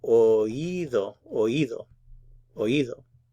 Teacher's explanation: Note that oído means specifically the inner ear, and for pronunciation, the O and the I are pronounced in separate syllables, and there's stress on the I because of the accent mark, so it's oído.